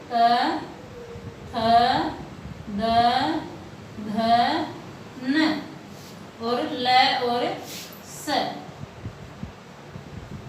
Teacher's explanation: इनका जो उच्चारण स्थान है वो है दंत, और ये क्या कहलाएंगे? जो संज्ञा रहेगी इनकी दंत्य।